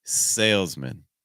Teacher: Our next one ends on man, but what we often find with man, when it is a suffix, when it goes at the end of a word, what tends to happen is man becomes min. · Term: reduction